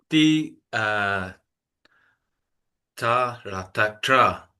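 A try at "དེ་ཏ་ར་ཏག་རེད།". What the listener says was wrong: Payako.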